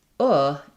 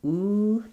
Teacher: the difference here in uh is that my tongue is a little bit lower and my lips are not quite as pursed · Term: good book vowel